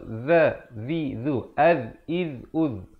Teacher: Zal, makhrajnya mestilah hujung lidah itu keluar.